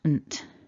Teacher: Now sometimes people might struggle with that and they might want to put a vowel between those two consonants, but there's no vowel sound